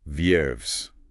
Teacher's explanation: The V is soft, almost between a B and V. V-I-E-R, knees.